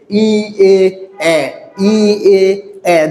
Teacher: তাই এটা হচ্ছে কি যে জিহ্বার অবস্থানের দিক থেকে, জিহ্বার অবস্থানের দিক থেকে জিহ্বা সামনের দিকে এগিয়ে আসছে। ই এ ই এ জিহ্বা সামনের দিকে আছে।